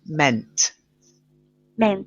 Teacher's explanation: If you don't get the T at the end, it's going to sound like men.